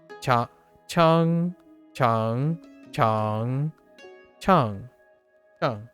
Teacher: So tone 1 is flat. And then tone 2 is rising. Tone 3 dips and rises.